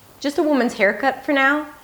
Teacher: the falling intonation at the end, to indicate that I'm done.